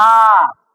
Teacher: इसके उच्चारण में दुगना समय लगता है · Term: दीर्घ